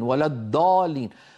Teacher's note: مفخمه مثلا يقول غير المغضوب عليهم ولا الضالين ولا الضالين مهما ضغط على طرف لسانه الامامي وفخمه لن يخرج الضاد المطلوبه وانما هذه دال مفخمه